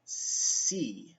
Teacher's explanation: to make the basic s sound your tongue is gonna go down in fact it actually touches the teeth